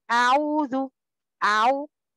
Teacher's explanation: الخطا هو نطق العين كصوت الذئب